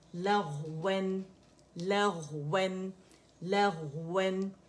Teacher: इसमें रखावा इस्तेआला है, आवाज चलेगी मोटाई से